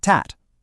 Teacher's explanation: your tongue tip taps right behind your teeth on that little bumpy ridge. That's your alveolar ridge.